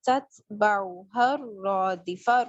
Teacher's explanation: را جو ہے وہ موٹا پڑا جائے گا اور اس کو ایک الف کے برابر لمبا کریں گے